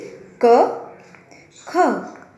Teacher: यह स्वर व्यंजन वर्णों के सामान्य रूप में छिपा रहता है, जैसे कि क, ख। आप सुन पा रहे हैं कि क तथा ख के उच्चारण के बाद में अ की ध्वनि निकल रही है